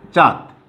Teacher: অর্থাৎ এইটা যেখানে ব্যবহৃত হবে সেখানে কিন্তু অবশ্যই নাকি স্বরের উচ্চারণটা হবে, অর্থাৎ নাক দিয়ে বাতাস বের হবার চেষ্টা চলবে বা নাক দিয়ে বাতাস বের হবে, এই জন্যে এটাকে বলা হয় অনুনাসিক ধ্বনি বা অনুনাসিক বর্ণ।